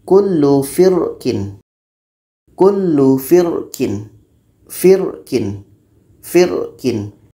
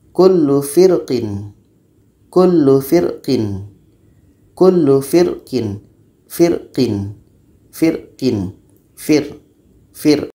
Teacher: kita ini akan terasa penuh ku firqin Kullu firkin firkin firkin kalau rongga mulut kita ini terasa penuh maka ro itu sudah dibaca secara tebal